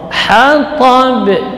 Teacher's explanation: Apakah ba-nya tebal? Tidak, yang tebal hanya huruf ta. Hatab, itu jadi qalqalahnya tetap tipis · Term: qalqalah kubra